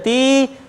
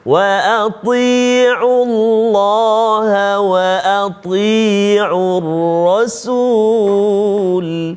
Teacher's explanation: Ti ada sifat dia. Makhraj sama dengan ta tapi sifat dia berbeza. Wa ati antara dia ada isti'la.